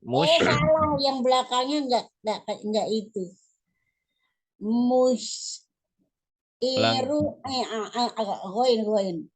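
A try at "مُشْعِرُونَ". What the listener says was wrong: Goin, mana ada goin? Ain ini, ain. Musyai.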